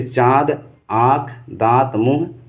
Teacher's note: अनुनासिक या नासिक या पंचमाक्षर जो ध्वनियाँ होती हैं नाक और मुंह दोनों से निकलती हैं